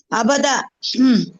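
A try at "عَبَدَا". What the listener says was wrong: ابدا ابدا ابدا ابدا مت کر. زبر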